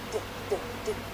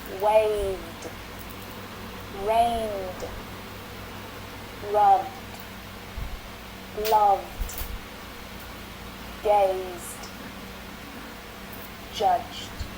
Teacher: pronounce the ed at the end of the word as d. Not id, but d